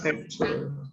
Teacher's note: When we say temperature, we often reduce the sounds, the number of syllables. So it sounds Temperature.